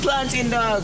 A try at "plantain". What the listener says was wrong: So you just removed the last A and just said the A should die and go. It's just the A. It is plantain. Pronounce it well. Plantain. Plantain.